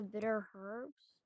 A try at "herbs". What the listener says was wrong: Bitter herb? Who's Herb? Herbs? The H is silent. Herbs.